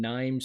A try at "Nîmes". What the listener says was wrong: Nîmes. I think you pronounce the S.